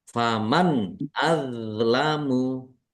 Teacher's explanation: do sukun bukan qalqalah jangan dipantulkan ya jangan dibaca Amu tapi dibaca azlamu